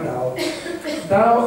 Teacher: tra la d di domodosso e la T di tolino una roba via di mezzo